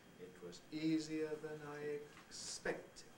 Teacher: is giving a head which extends from east to ick and it's all said in this example on a level high pitch